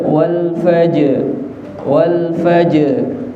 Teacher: Wal fajr ditambah ra sukun tebal lagi, wal fajr.